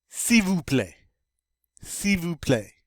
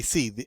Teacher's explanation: But you don't, you just say si. In this case, the L gets to be silent.